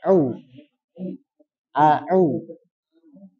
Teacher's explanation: Kemudian au ditekan. di tengah tenggorokan.